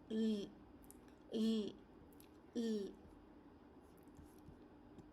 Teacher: So your mouth is slightly open, the tongue tip touches the alveolar ridge just behind the front teeth